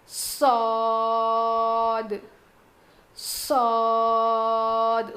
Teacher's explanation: زبان کی نوک کو نیچے کے دانتوں کے جڑ میں لگانے سے صاد ادا ہوتا ہے. زا, سین, صاد کا مخرج سیم ہے.